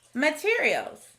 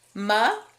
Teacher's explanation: in this word we hear the sneaky schwa sound in the first syllable